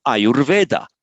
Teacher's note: The U becomes ur before the voiced consonant.